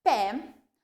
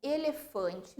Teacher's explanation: as palavras pé e ótimo apresentam o timbre aberto, enquanto que elefante e ovo apresentam o timbre fechado